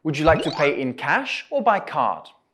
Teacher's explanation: your voice will go up at in cash and down at by card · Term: rising and falling intonation